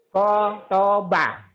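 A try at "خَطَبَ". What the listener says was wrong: khotoba nggak ada yang panjang. Khotoba. Khotoba. Khotoba.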